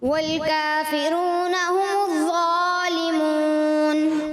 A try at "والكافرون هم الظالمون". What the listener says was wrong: थोड़ा सा ज़ा में ऐसा लगा आप ज़ा की तरफ चले गए, हुमुज़्ज़ा इस तरह महसूस हुआ, जो कि हल्का सा गैर मामूली अंदाज में था।